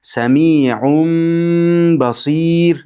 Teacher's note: Mana bu tanvinimiz mimga almashib ketadi. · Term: iqlab